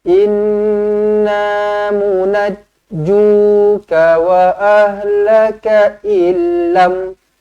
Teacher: nun sabdu wajibul gunnah dengungkan dua harakat